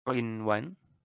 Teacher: Jadi tidak ada melebur, tidak ada dengungan, jadi ini dibaca jelas selayaknya izhar biasa.